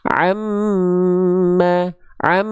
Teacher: Satu huruf laginya namanya adalah mim bertasydid. Nah, mim bertasydid juga ketika dia bertasydid dia adalah gunnah. Sama, dia juga dengung.